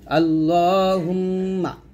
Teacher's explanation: আল্লাহ বলবেন এখানে লা বলবেন না মোটা করে বলবেন